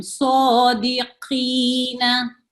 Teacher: कौफ ये भी मोटा है, तफकीम से पढ़ा जाता है